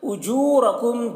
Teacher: اجورکم، جو میں واو مدہ ہے، اسے ایک الف کے برابر کھینچ کر پڑھیں گے، را کو پر پڑھیں گے۔ کم کے میم میں اظہار شفوی ہو رہا ہے، اسے جلد پڑھیں گے جیسے ہم تم کی میم کو پڑھتے ہیں۔